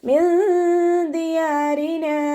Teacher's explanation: നൂൻ സാക്കിനയെ നമ്മൾ മറച്ചു വെച്ചിട്ട് മണിച്ചോതി കൊടുക്കുക. നൂനിൻ്റെ സൗണ്ടിനെ വ്യക്തമായിട്ട് അവിടെ കേൾപ്പിക്കരുത്, നമ്മുടെ നാവിനെ മുകളിൽ തട്ടിക്കാതെ നോക്കും ചെയ്യുക